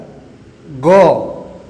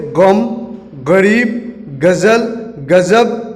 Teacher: उर्दू में इसका उच्चारण बिंदी लगने के कारण कंठ से होता है